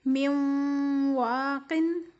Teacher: واو کی مثال دیکھ لیں، غنہ کے ساتھ من ولیجن، من و اس واو کے اوپر تشدید ہے اور نون کے اوپر ساکن ہے، اس لیے میم کو واو کے ساتھ ملا کے پڑھنا ہے، یعنی کہ نون کو واو کے ساتھ ہم مدغم کر رہے ہیں · میم کے بعد نون ہے، نون کے اوپر فرسٹ والا نون ساکن ہے اور اس کے بعد واو کے اوپر تشدید ہے۔ نون ساکن کے بعد تشدید آ رہی ہے اور یہاں ہم غنہ ادا کر رہے ہیں، من واقن۔